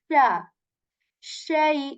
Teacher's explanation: this sheen letter has this quality that the air spreads in your mouth when saying sha, in.